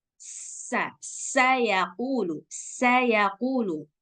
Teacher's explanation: ada sifat safir maka suara desisnya harus kuat